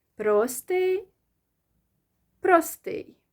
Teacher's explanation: whether you stress the first syllable or the last one, it doesn't matter. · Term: double stress